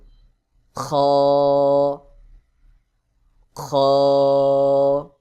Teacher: শেষ অংশ এখান থেকে গলার শুরু অংশ এখানে শেষ অংশ এখানে গলার শেষ অংশ হইতে খ উচ্চারণ হয়